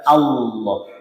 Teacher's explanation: Jadi Allahnya di posisi pangkal lidah diangkat. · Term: lam jalalah taghlil